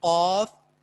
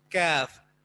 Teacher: قاف میں زبان بالکل اس کوے کے ساتھ ملتی ہے، اور کاف میں تھوڑا سا آگے منہ کی طرف اوپر تالو سے ٹچ ہوتی ہے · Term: حروف لہاتیہ